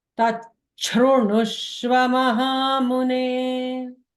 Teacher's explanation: Normally, if it is broken down, it should be tat shrunutva, shru like in the shiva sha. But when you combine them together, the sandhi rule, it changes it to the mahaprana cha with a small cha.